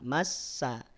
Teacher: Nun tahan dua harakat